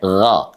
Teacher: Yaitu dari adnal halki, tenggorokan terdekat, ya. Tenggorokan terdekat dengan anak lidah.